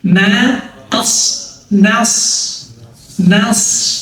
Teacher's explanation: t-nya tebal tapi jangan sampai bunyi na ngikut tebel Ih kalau nos nanya ngikut tebal gak boleh yang benar na